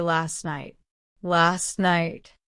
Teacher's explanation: We also drop the T sound in last. So, we don't say last night, we say last night.